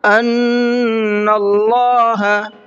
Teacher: ان کے نون میں غنہ کریں گے، اس لیے کہ نون کے اوپر تشدید ہے، اور اللہ کے لام کو مبھر کے پڑھیں گے، اس لیے کہ اللہ کے لام سے پہلے نون کے اوپر زبر ہے۔